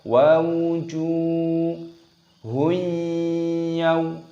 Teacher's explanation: jimnya berharokat dhammah, ada wawu sukunnya, panjangkan jimnya, matabi'i, panjangkan 2 ketukan